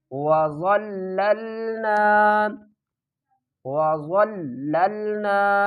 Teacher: ضا کو پر پڑھیں گے اور ضا کو لام کے ساتھ ملائیں گے، لام کے اوپر سختی کریں گے اور پھر اس لام کو اگلے لام کے ساتھ ملائیں گے